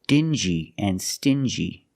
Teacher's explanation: these two words have the regular n Sound n plus the J like juice together